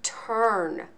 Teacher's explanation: we hear three consonant sounds but we don't hear a vowel sound we don't hear that short u at all we just hear